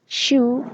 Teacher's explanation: Post-alveolar sounds such as the first sound in shoe are produced with the blade of the tongue raised just behind the alveolar ridge.